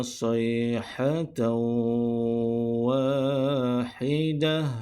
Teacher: Wakaf dengan ta marbutah. Pada ketika wakaf, bacaan ataupun sebutan huruf ta marbutah perlu ditukarkan kepada huruf ha.